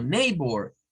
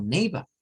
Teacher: hay zonas británicas en donde se maneja un inglés rótico, donde suenan la R